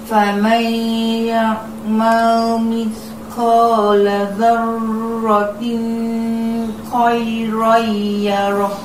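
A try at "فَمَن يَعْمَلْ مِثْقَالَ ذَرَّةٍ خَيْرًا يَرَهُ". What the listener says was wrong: Okey, bila mana tanwin bertemu dengan huruf kha, kita kena baca pendek, tak boleh baca panjang. Faman ya'mal mithqala dzarratin khairan yarah.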